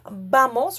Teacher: some native Spanish speakers saying bamos with a slight and softer B sound. Even though the word is written as V A M O S.